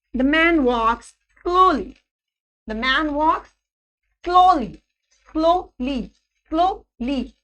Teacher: This will be the falling intonation on the last syllable of the word.